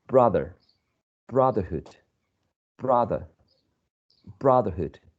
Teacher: So as we can see, it is the first syllable, and it's the same syllable, the one that is the most prominent one of all. Even though we're adding this suffix, the stress does not change its place.